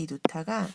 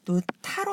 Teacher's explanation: 히읗이 디귿을 만나서 티읕으로 축약되는 겁니다.